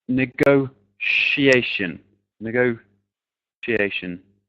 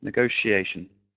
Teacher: So usually in English, in a word, that TIA is a sh sound.